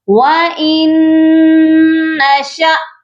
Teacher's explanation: حمزہ کو نون مشدد کے ساتھ ملانا ہے اور غنہ بھی کرنا ہے، اور اس کے آگے شین کے آگے الف نہیں ہے، یہ حمزہ ہے، اور حمزہ جب بھی ساکن ہوتا ہے تو اس کو جھٹکا دے کر پڑھا جاتا ہے۔ · حمزہ جب بھی ساکن ہوتا ہے تو اس کو جھٹکا دے کر پڑھا جاتا ہے۔ یہ لفظ پڑھا جائے گا وَإِن نَّشَأْ نُغْرِقْهُمْ، قاف پر قلقلہ کریں گے کیونکہ قاف حروف قلقلہ ہے۔